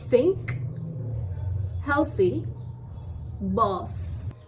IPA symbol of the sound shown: θ